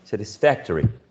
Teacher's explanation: five syllables and the third one is the uh stressed one